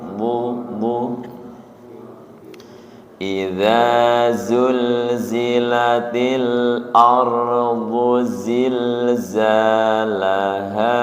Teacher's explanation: bukan di ujung lidah tapi di sisi lidah menyentuh ke geraham.